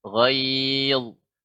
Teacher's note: caranya ya ditebalkan suara naik ke langit-langit